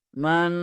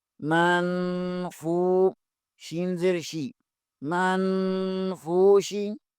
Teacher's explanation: نون ساکن کے بعد فا حروف اخفا میں سے ہے، یہاں اخفا ہوگا، من، فا پیش کے آگے واو مدہ آ رہا ہے، اسے بھی ایک الف کے برابر کھینچیں گے، منفو، شین زیر شی، منفوشی.